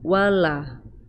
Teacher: huruf lam berharokat fathah diikuti Alif dibaca Dua harokat dua ketukan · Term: Mad Thobi'i